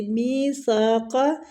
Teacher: میثاقا، می کو کھینچیں گے، یا مد ہو رہی ہے، سا کے آگے الف مد ہو رہی ہے اور سا کی سیٹی نہیں آنی چاہیے، زبان کی ٹپ تھوڑی سی باہر آئے گی۔